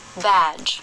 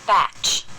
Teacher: Vowels are a little longer before voiced endings in these kinds of minimal pairs.